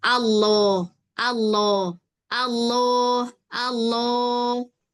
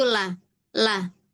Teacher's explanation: kalau lam itu tipis, dia itu nggak menaikkan pangkal lidah